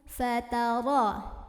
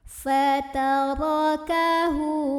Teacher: Ra-nya dibunyikan secara tafkhim karena ra berbaris dan barisnya di atas fathah. Maka bacanya tebal dengan cara mengangkat pangkal lidah kita